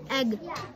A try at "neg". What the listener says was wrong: Oh, you forgot to go back and make your end sound. Neg. Remember, neg.